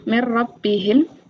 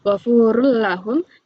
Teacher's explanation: Dalam ilmu tajwid idam bila gunah adalah apabila ada nun sukun atau tanwin bertemu dengan salah satu dari dua huruf yaitu lam dan ro. Cara membacanya dibaca melebur tanpa mendengung.